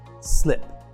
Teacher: nope no vibration it has a final unvoiced sound